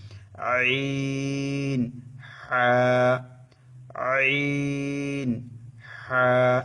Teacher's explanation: আইন হা গলাকে একটু চিপে উচ্চারণ করতে হবে